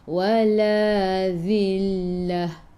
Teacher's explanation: Tekan ke dalam lam, lam ada sabdu. Ta marbutah, bila berhenti jadi ha